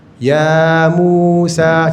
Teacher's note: Ya dua harakat, mu dua harakat, sa dua harakat.